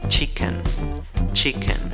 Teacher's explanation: es la I débil, la I que se duerme, no es la I que se ríe, ¿ok? Y en la segunda sílaba, en la escritura tienes una E, en la pronunciación tienes una mini schwa, bien chiquitita, que ni se nota, se duerme, se desmaya, ¿ok?